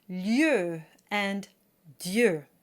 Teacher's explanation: Now in French, double vowels are not divided equally. The first one is short and the second is long. So I like to think of the first vowel as belonging to the consonant that came before.